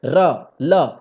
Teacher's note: र ल, ये सब क्या है? दांत के मूल से टच करता है।